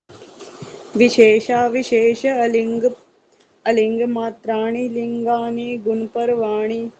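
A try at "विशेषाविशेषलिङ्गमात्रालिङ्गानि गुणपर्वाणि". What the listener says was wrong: हाँ, अगर आप इसको इकट्ठा बोलेंगे जैसे आपने बोला तो अलिंग नहीं बोलेंगे, तो इसमें है ही नहीं, खत्म हो गया।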